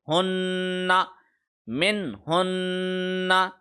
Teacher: من ہن, جب نون کے اوپر یا میم کے اوپر تشدید آ جائے تو اس پہ 1 سیکنڈ کا غنہ ہوتا ہے. نون کی صورت میں ہم زبان کے منہ کی چھت کے ساتھ جوڑے رکھیں گے 1 سیکنڈ کے لیے